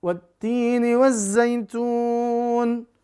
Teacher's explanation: Ada dhammah dia bertemu dengan waw sukun. Lalu nunnya karena dia di akhir, walaupun dia berharokat kasrah, dia disukunkan. Maka jadi panjang. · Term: huruf mat, bacaan panjang